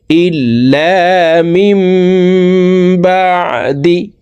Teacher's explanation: এই নুন সাকিনকে ছোট্ট মিম দ্বারা পরিবর্তন করিয়া গুন্নার সহিত পড়তে হবে। তো এই মিম এই ছোট্ট মিমের সাথে গুন্না করে পড়ব, এই নুন বাদ পড়ে যাবে। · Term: ইকলাব গুন্না